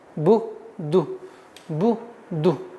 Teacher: Нужно обращать внимание, так как вау идет после даммы, чтобы ду не протягивалось. То есть ияка на'буду не удваивалось и не протягивалось.